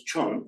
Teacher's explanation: The final A gets dropped off, so the L becomes an A. And the short A often gets pronounced as an O